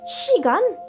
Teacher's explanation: avec un son i, le s va se prononcer sh